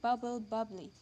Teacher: Where a syllabic consonant is possible in the deriving word, example bubble, a syllable is lost when y is added